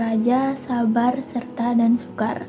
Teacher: Konsonan getar itu ada konsonan getar alveolar. Ee ini mencakup huruf R.